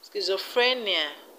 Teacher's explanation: schizophrenia the stress is on free